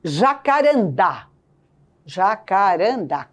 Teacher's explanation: 4 sílabas, a sílaba tônica é a última. Oxítona. Terminada em A, recebe acento gráfico.